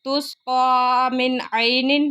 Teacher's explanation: من عین نون ساکن کے بعد عین آ گیا، یہاں پہ اظہار ہو رہا ہے۔